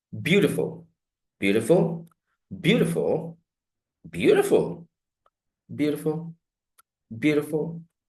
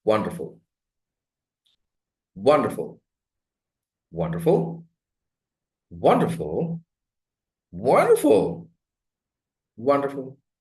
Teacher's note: These are falling, rising, fall, rise, fall, and level tones.